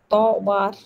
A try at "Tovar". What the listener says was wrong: Tovar is R has to be pronounced. No, we are not reading English. In English, R is silent in the British English. But Konkani is not English. Konkani is Konkani. So Tovar.